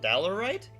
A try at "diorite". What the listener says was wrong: That's an I. Like the word die?